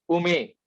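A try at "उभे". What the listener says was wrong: Ubhe. Not ume. Ubhe. That is bhe.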